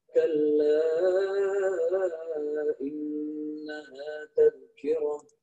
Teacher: sifatul huruf nun tasydid. Ya, nun sebagaimana kita tahu adalah sifatul huruf ghairu mutadaddah, yakni gunnah. Gunnahnya kurang dikit.